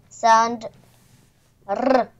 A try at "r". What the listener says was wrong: Все равно ты тянешь вибрацию Р. Ну, и сейчас перетянула. А должен Р?